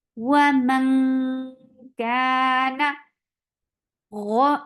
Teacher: Ro, again is heavy for fatha, open your jaws. The sound is very short.